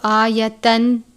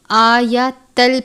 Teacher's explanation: لام مشدد حروف یرملون میں سے ہے، ادغام کا قاعدہ لگتا ہے لیکن لام اور را ان دونوں پر غنہ نہیں کرتے، باقی 4 حروف غنہ کر کے پڑھتے ہیں، تو ہم اس کو آیتن نہیں پڑھیں گے بلکہ آیتل پڑھیں گے۔